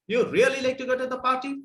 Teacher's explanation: It is going up actually from really. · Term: rising tone